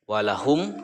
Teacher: Ini adalah idhar sapawi. Walahum, cara membacanya idhar jelas ya, walahum jelas, dan kedua bibirnya itu tertutup